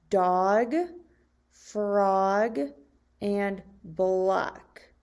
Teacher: vowel o sound in the words dog frog and block so we hear the ah sound in the short vowel o